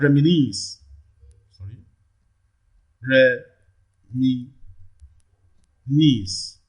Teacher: the last syllable knees receives the primary stress here